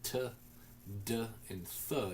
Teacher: The t, d, and th, those are clearly dentals.